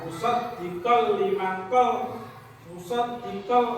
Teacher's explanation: langsung masuk tanpa berdengung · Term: idgham bila gunnah